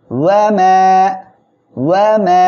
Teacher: মা এক লিপ টেনে পড়তে হবে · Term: মদের হরফ